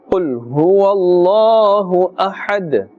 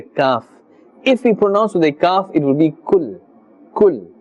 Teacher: qaf is part of the huruf musta'aliyah, therefore it must be pronounced with a thick tone. Do not confuse this with the kaf.